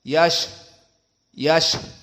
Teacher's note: Sya di sini di saat disukunkan keluar nafas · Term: hams